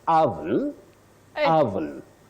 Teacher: oven oven or you can say oven oven the O the this o takes what we call the mid Central sound H just like in the word stomach not stomach that we